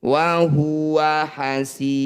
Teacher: Maqabi'i bertemu huruf hidup kemudian dihentikan disebut bacaan mad alif disukun. Cara bacanya si panjangkan 6 harokat, huruf terakhir sukunkan. Wa huwa hasirun, ketika dibaca berhenti.